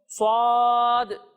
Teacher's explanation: سیٹی کی آواز بھی آئے گی اور اسے موٹا کر کر پڑھیں گے